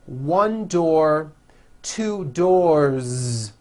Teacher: look around and you say out loud one door two doors with a voiced Z ending